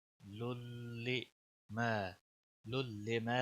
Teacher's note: मा अलिफ मद्दा है, एक अलिफ के बराबर खींचना होगा।